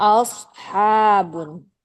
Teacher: a-nya itu dia agak o enggak benar-benar a